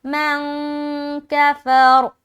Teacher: اب یہاں نون ساکن کے بعد کاف ہے تو یہاں پر ہم اخفا کر رہے ہیں